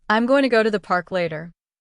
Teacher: I'm going to sounds like I'm gonna. That is natural real English. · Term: connected speech